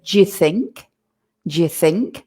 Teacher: the words in between we're going to make them very very short and we're going to swallow them a little bit